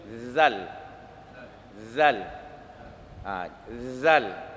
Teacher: Huruf zal di hujung lidah. Dia lagi kena gigi.